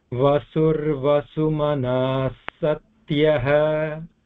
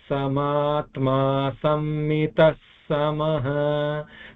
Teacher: the first Visarga will combine with the Sa to make the double Sa.